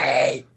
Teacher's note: it's real breathy and raspy and Gollum-like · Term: whispering